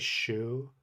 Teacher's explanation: I think shake and take I have my tongue in the same spot in English, but the retroflex is further back than any English sound